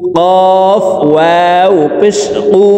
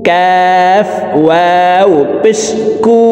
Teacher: কফ জিহ্বার গোড়া তার বরাবর উপরের তালুর সঙ্গে লাগাইয়ে উচ্চারণ করব, আর কাফ হরফের উচ্চারণ জিহ্বার গোড়া থেকে একটু আগে বাড়িয়ে তার বরাবর উপরের তালুর সঙ্গে লাগাইয়া উচ্চারণ করব।